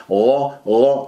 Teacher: غ لا تقول غو، غفورا، ولا تجعلها غفورا، غفورا، الغين يجري فيها الصوت لا يجري فيها النفس